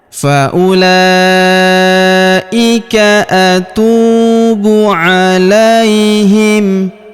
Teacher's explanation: huruf la kita ayun sekali karena ya sukun di depannya